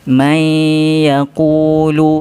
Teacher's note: Kalau dalam konteks kalimah ini, nun selepasnya ada ya, bermakna bacaannya perlu masukkan ke dalam huruf ya dengan dengung